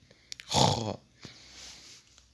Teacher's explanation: se prononce au niveau du haut de la gorge en soufflant rugueusement, c'est-à-dire en grinçant